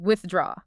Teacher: The thuh followed immediately by the D of draw. It requires a bit of gymnastics with the tongue. You have to go from the teeth right back. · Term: thuh sound